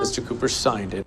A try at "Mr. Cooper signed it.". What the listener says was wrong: 제가 sign을 sign 하시라고 했잖아요. 이게 sign이 이 I 발음이 들어가서 I, OE 뭐 다 이응자 들어간 애들은 다 빨리 하시라고 했어요. 그래서 뭐 모음 소리가 뭐가 되든지 그래서 sign도 당연히 I 들어가는데 짧게 하셔서 sign 이렇게 하셔도 돼요. sign, sign.